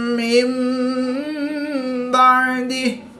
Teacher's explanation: نون ساکن کے بعد حرف با ہے تو یہاں پر نون ساکن کو میم سے بدل کر غنہ زمانی کر کے پڑھیں گے